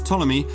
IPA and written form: ˈtɒləmi (Ptolemy)